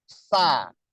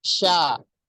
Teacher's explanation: Tafashi itu artinya hembusan angin yang keluar itu menyebar di dalam rongga mulut di permukaan lidah.